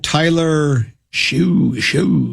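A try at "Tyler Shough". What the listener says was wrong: I think it's actually, even though it's not pronounced the way it looks, I believe it's Shuck. I feel like there's like a K sound, even though there's no K. it's like a GH.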